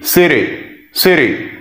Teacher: This is T, this is Y. So T followed by Y at the end of the word, we're gonna pronounce like D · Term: American T